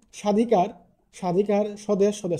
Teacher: শব্দের শুরুতে যদি কোন ব্যঞ্জন বর্ণ থাকে এবং এর সাথে যদি কোন ব ফলা যুক্ত থাকে তাহলে সাধারণত সেই ব ফলার কোন উচ্চারণ হয় না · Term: ব ফলার উচ্চারণ